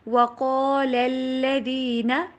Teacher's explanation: وقال الذین قاف کو موٹا کر کے پڑھیں گے،